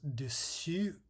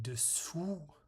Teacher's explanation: the only difference is that dessus features the front rounded vowel and dessous features the back rounded vowel.